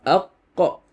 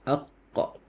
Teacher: Qaf ikhfa aqqa. The back of your tongue, you can feel the back of your tongue is actually lifted.